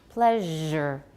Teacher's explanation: So pleasure probably became partially voiceless